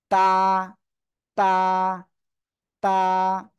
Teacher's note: জিব্বার আগা সামনের উপরে 2 দাঁতের গোড়ার সাথে লাগিয়ে উচ্চারণ হবে